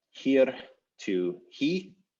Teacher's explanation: Syllable final R's were lost. So we go from something like here to he with no final R.